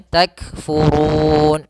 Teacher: Kemudian pada lafaz run, rnya tebal karena dia ro berharakat dommah.